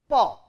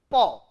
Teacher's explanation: two lips are closed together